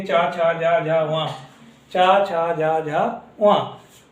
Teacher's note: हमारी जीभ जो होती है वो मुख के तालु को, यानी कि तालु के जो चिकना भाग है उसको स्पर्श करती है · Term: तालव्य